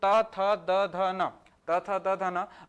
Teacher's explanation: त थ द ध न को बोलने पर दांत को टच कर रहा है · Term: दंतव्य